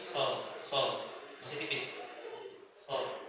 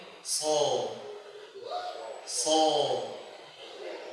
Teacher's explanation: Lidah bagian tengah ke belakang naik ke langit-langit. Kemudian hurufnya tafkhim, tebal. Jadi bukan seperti ini, sol, masih tipis, sol, tipis.